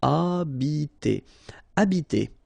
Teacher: the H, like that here, is not pronounced at all. Okay, so you don't pronounce it, so you get the first sound is the vowel A here.